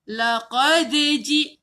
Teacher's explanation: cara nak lantun hujung lidah sentuh gigi atas untuk huruf dal. Dal makhraj dia hujung lidah sentuh gigi atas ni. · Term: qalqalah sughra